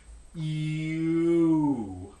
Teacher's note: you might be able to feel your tongue body moving back of course in english because the back vowel is rounded and